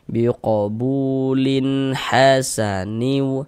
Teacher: Sebelum waw sukun atau sebelum waw mati ini ada ada harokat dhammah nih atau tanda baca dhammah nih. Maka huruf yang memiliki harokat dhammah ini dibaca panjang, sehingganya bu dibaca panjang. Mad tabi'i panjang 2 harokat sesuai dengan rumus 2 warna hitam.